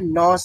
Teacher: এইখানে ন উচ্চারণ করতে হলে নাক নাকও ব্যবহার করতে হয় অবশ্যই জিহ্বার অগ্রভাগ তার বরাবর উপরের তালুর সঙ্গে লাগালেই নুন উচ্চারিত হয়